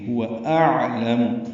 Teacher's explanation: حمزہ اقصی حلق سے ادا ہوگا اور عین وسط حلق سے ادا ہوگا. · عین وسط حلق سے ادا ہوگا. عین ساکن ہے، اس پہ اظہار ہوگا.